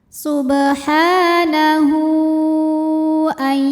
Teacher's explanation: Karena ada hak dhamir, hak yang bentuknya seperti ini ya, diapit 2 huruf hidup, nun dan hamzah, dan huruf setelahnya adalah hamzah. Maka hak dhamirnya dipanjangkan sama seperti mad jaiz, boleh 4, boleh 5 harokat. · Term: mad silah tawilah